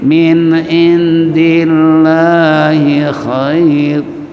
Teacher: Dillah as-samsiyah, lamnya lam tarkik, dibaca tipis